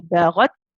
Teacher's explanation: We mentioned how when the ta has a sukoon, it has the quality of shidda and hams, right?